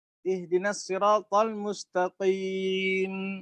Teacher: Yang harusnya mustaqimah boleh diberhentikan mustaqim, disukun.